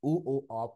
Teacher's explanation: আবার বলছি, ই, এ, এ, এটা হলো সম্মুখ বা প্রস্থিত, টান হয়েছে। উ, ও, অ, এটা গোল হয়েছে, এটা গোলাকৃত এবং পশ্চাৎ। আর আ, এটা মাঝখানে, স্বাভাবিক এবং কেন্দ্রীয়।